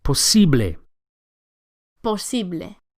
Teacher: The second syllable, the E, is accentuated.